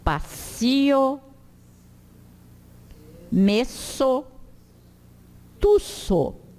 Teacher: O S é sempre como dois S num som de C cedilha.